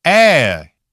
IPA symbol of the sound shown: æ